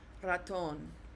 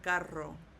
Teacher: you have to kind of roll that R for a little bit of time